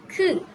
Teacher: The name is kiok and the sound is similar to, it is between g and k. So that is similar to k.